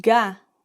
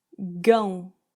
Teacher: the difference of an open sound and a nasal sound